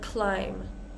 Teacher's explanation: we have a lot of words that end in mb and the B is going to be silent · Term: silent be's